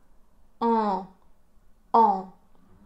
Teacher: on va placer la langue au fond de la bouche, et on va faire un son bien nasal. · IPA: ɑ̃, [ɑ̃]